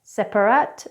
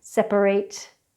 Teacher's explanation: it's an AHT sound however the verb separate we use an 'eight' sound